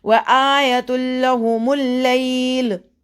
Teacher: अब देखिए ये तनवीन है, 2 ज़ेर 2 पेश। तनवीन का इदगाम हो रहा है लाम के साथ। जब भी तनवीन लाम या रॉ आता है तो यहाँ पे یہ جو نون کی آواز ہے وہاں پہ نہیں فیل ہوگی.